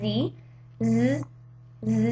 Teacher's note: you can feel your vocal cords vibrating so this is a voice sound